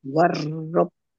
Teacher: Tasdid itu ditekan biar tampak doublenya.